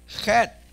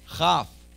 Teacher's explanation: Chet is on back of the throat on top. Chaf is on the back of the throat below.